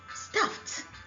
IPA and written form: stʌft (Stuffed)